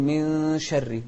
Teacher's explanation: فنقول من شر، من شر يعني نخفي النون ونقول من شر. كذلك الراء المكسورة مرققة